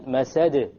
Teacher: There's a slight more emphasis on the masad because it's at the end of a word.